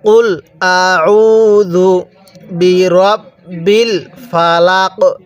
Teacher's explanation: কফটা উচ্চারণের সময় গলার মধ্যে হালকা ধাক্কা দিয়ে পড়বেন, কারণ কফটা হলো কলকলার হরফ।